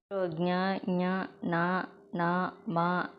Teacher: ఇవివచ్చేసి అనునాసికాలు ముక్కు సహాయంతో పలుకుతున్నాం కదండీ